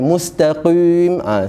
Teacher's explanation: Qaf ialah huruf yang tebal ataupun kita sebut sebagai huruf isti'la yang diangkat pangkal lidah. Tetapi tingkatan ketebalan pada qaf yang huruf isti'la ni yang kita kata tebal, dia bukan tingkatan yang paling tebal.